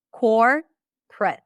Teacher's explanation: you may reduce the middle syllable completely